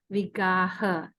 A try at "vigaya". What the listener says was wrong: Where is Y? As a Y.